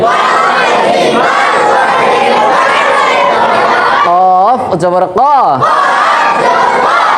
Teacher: অফ অক্ষর জিহ্বার গোড়া থেকে মোটা করে পড়তে হয়